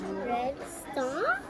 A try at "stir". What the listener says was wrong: Get the R in there. Stir.